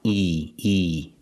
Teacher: The top of the mouth and the bottom of the mouth are very close together when you say E like green beans. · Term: long E